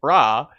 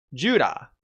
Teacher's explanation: Ra is pronounced with a single tap of the tongue against the roof of the mouth